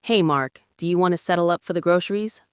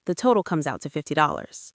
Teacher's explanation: I'm going to use the exact same polite words, but with a flat downward intonation.